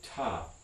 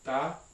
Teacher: the difference between an aspirated and unaspirated stop